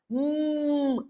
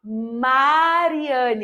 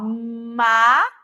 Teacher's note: veja que quando eu faço esse som meus lábios se tocam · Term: som do M